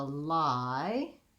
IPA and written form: laɪ (lie)